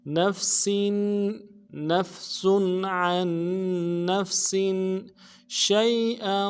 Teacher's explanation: سین کے نیچے تنوین ہے، سین سیٹی والا حرف ہے، تنوین میں غنہ کریں گے